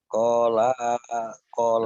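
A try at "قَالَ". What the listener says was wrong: Lanya pendek, lanya pendek. Kolama, kolama, kolama sih Bapak. Kolama, nahakuma, kolama, nahakuma. Koknya panjang, koknya panjang.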